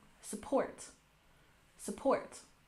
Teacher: Support has stress on the second syllable.